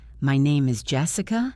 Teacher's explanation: For example, if I say, "My name is Jessica," with a rising voice, it sounds like I'm asking you to confirm my own name